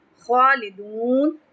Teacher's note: خالدون خا پہ تفخیم کریں گے، لمبا کریں گے